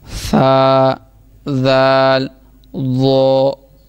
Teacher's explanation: जाल नहीं, जाल, क्योंकि हमने पढ़ा है सा दाल और ज़ो ज़ुबान का किनारा और ऊपर वाले दांतों के अंदरूनी किनारे से, ज़ुबान का सिरा और ऊपर वाले दांतों के अंदरूनी किनारे से सा दाल और ज़ो अदा होगा